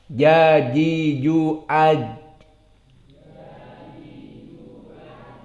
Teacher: Maka jim di saat dinatakkan harus dipenjara, tidak boleh keluar nafas. Dan juga sifatnya syiddah. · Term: jahr dan syiddah